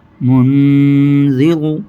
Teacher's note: ذال، یہاں بھی غنہ ہوگا۔ نون ساکن کی آواز کو ناک پہ چھپائیں گے، ایک الف کے برابر غنہ کریں گے